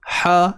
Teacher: Macam huruf ha lah sebut dia ha. Tapi kalau kita tersempitkan kita punya kerongkong kita, ha, dia jadi ha pedas